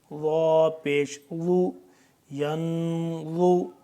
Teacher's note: ضا کو زبان کی نوک کو سامنے والے اوپر والے دانتوں کے پچھلی سائڈ پہ لگائیں گے تو صحیح طریقے سے ضا ادا ہوگا